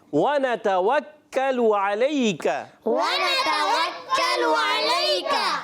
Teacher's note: ادائیگی باریک رکھنی ہے، علیکہ میں عین کی ادائیگی، اور پھر آخر میں علیکہ کاف کی باریک ادائیگی کرنی ہے، کاف موٹا نہیں پڑھنا